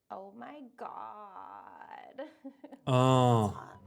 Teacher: use creaky voice this means to lower your pitch and really vibrate your vocal cords